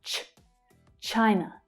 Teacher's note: The consonant sound is followed by the /aɪ/ vowel sound, /aɪ/ as in 'my'. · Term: ch consonant sound